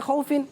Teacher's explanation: ویسے اس کو پڑھتے ہیں خوفن بغیر کھینچے